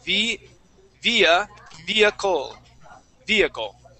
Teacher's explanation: we do not pronounce that H